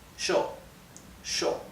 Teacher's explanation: so this would be pronounced sh sh okay sh in Argentina and in Uruguay and yo in all the other Spanish speaking countries